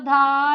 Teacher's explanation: चौथा वर्ण जो होता है वह महाप्राण होता है महाप्राण होता है और सघोष होता है